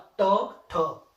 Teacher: जो जुबान है उसको क्या करते हैं फोल्ड करते हैं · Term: मुर्धा व्यंजन